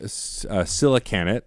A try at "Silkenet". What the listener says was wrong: Silkenet. you added a syllable that wasn't there. Like, it could be Silcanet, but... And adding an extra letter.